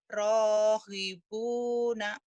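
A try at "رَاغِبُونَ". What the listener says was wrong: Rogibuna. G ya. Orang Jawa G-nya ke hi. Rohibuna. Jangan. Rogibu. G. Gigi. Togo Monas. G. Rogibuna.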